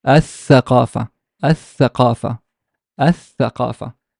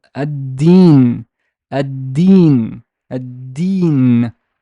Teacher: Here, the lam is not pronounced because there's a shadda.